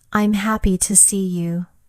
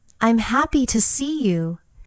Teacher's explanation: In the second version, your voice rises on happy